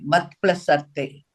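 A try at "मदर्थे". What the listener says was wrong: Arte. Mahaprana, you have to stress.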